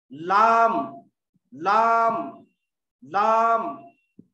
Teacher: 9वां मखरज का नाम ज़ल्क़ी, नोके जबान यानी जबान की नोक और तारक के मसोड़ों से, तारक जो रहती यहाँ पे, तारक का हिस्सा ऊपर, उसके जो मसोड़े रहते, ये हिस्सा मसोड़ों का हिस्सा, उससे एक हर्फ निकल रहा, वो है लाम लाम लाम।